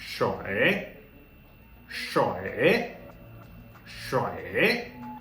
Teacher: third tone, falling then rising